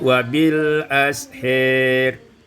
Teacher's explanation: Pada ayat yang ke-18, wabil ashar, imalatu fathatil ha wal alif, diimalakan fathah ha dan alif menjadi wabil ashir